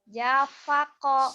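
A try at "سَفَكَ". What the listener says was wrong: Sa. Safako bukan Japako. Safako beda sedikit tapi jauh ya pengaruhnya gitu. Bedanya salahnya sedikit tapi berperan.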